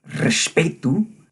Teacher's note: You can get the bold, aggressive rolled R of Mozambican Portuguese, like in the word Respeito